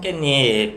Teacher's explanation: 얘도 이제 비음화가 일어나서 최종적으로 깻잎 발음이 됩니다